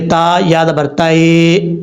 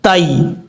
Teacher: اب یہاں پر یا ساکن سے پہلے زبر ہے تا کے اوپر، تو اس کا مطلب یہاں پر یا لین ہے یا مدہ نہیں ہے. یا لین کا مطلب ہے یا کو لمبا نہیں کریں گے.